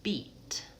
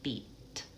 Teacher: I'm moving from bilabial to alveolar.